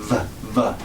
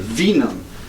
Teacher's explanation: we call it a dental labial, where you put your top teeth on your bottom lip